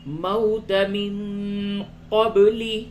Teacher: وَلَقَدْ كُنْتُمْ تَمَنَّوْنَ الْمَوْتَ مِنْ قَبْلِ أَنْ تَلْقُوهُ، وَلَقَدْ دال میں قلقلہ کیجئے، اور کنتم، نون ساکن کے بعد تا ہے، اخفا ہوگا، تمنون، نون مشدد ہے، غنہ ہوگا، موت من قبل، نون ساکن کے بعد قاف ہے، اخفا کیجئے